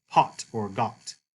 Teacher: Omicron, remember, is not the long O sound, but the short ah, like in pot or got.